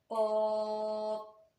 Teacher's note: और तालु के नर्म हिस्सा से अदा होता है। जब हम क़ाफ को मोटा करने की कोशिश करेंगे यानी कि पुर करने की कोशिश करेंगे तो खुद ब खुद हमारी ज़बान की जड़ जो है वो तालु की जानब उठ जाएगी। और आपको ये भी पता है कि ज़बान की जड़ जो है ना वो तालु के नर्म हिस्सा से ही लगती है। · ज़बान की जड़ जो है ना वो तालु के नर्म हिस्सा से ही लगती है। जब तालु के नर्म हिस्सा से टच होगी तो यकीनी बात है हमारा क़ाफ जो है वो बिल्कुल दुरुस्त अदा होगा, यानी कि अपने मखरज से अदा होगा।